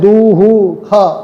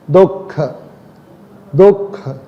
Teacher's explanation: तो का और खा के पहले पूर्व में जहाँ विसर्ग आता है वह विसर्ग का उच्चारण एक तो आधा होता है, दूसरा वह जिह्वा मूलीय कहलाता है, क्योंकि हम जब उसका उच्चारण करते हैं तो वह उसका उच्चारण हमारे जिह्वा के मूल से होता है। दुख दुख, मूल जिह्वा मूलीय अर्थात जिह्वा का जो मूल है, मूल तो आप जानते ही हैं, मूल जहाँ से प्रारंभ होता है।